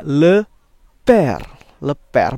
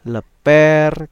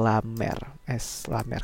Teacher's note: kalau aksen grave ini e-nya agak terbuka, e kayak bebek yang huruf e kedua